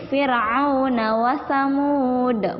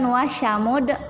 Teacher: Huruf sa. Ini huruf sa bukan sya.